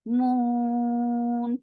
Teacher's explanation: 4 counts long, while you are keeping your lips very circled and giving tawassut on noon.